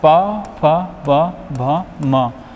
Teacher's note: पा वर्ग होता है हमारा ओष्ठ, यानी कि ऐसे वर्ण जिनके उच्चारण में ओष्ठ का यानी कि होठों का प्रयोग हो रहा है